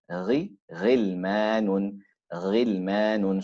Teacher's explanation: the articulation point remains the same, although the heaviness or the roundedness of the letter becomes less